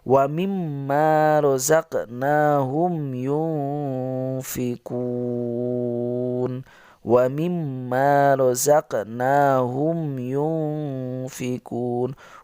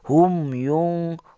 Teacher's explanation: huruf mim harus tampak jelas tanpa gunah dengan mulut tertutup sempurna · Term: idhar syafawi